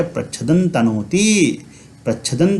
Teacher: तो प्रच्छदम तनोति हम नहीं पढ़ेंगे, इस अनुस्वार का उच्चारण नकार के जैसा हो जाएगा